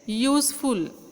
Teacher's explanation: जरी बिगिनिंगला यू असला, वॉवेल असला, तरी उच्चार मात्र य होतोय